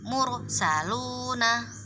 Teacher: Nah ini adalah contoh yang rok sukun yang didahului oleh dhammah, maka nanti bacanya roknya harus dibaca dengan moncong